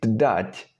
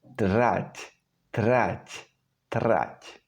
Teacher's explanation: The reason is that when you're saying D, you put your tongue in the same place as when pronouncing R. The difference is that with R, the tongue is not so firmly pressed against the palate. So what you need to do is to slightly lower the stress on the D and slur the pronunciation a little bit.